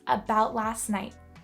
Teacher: When saying this sentence in spoken and natural English, we often don't pronounce the t sound at the end of words about and last.